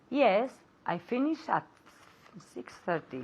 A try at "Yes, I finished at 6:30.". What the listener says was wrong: Oh, I didn't hear the T in the end. One more time.